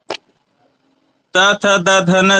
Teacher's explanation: त थ द ध न जुड़े जो बोलेंगे तो ऊपर वाले दांत से जिह्वा का क्या होगा, स्पर्श होगा